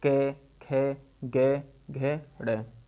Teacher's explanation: तो जो हमारा ये क वर्ग है, क वर्ग, ये पूरा हमारा कंठ से बोला जाएगा। क वर्ग पूरा हमारा कंठ से बोला जाएगा।